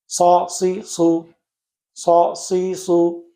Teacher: সদ বলতে আমাদের মুখটা গোল হবে না